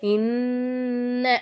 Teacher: நூனுக்கு மேல சத்து வச்சிருக்காங்க அப்ப நம்ம என்ன செய்யணும் நல்லா அழுத்தி உச்சரிக்கணும்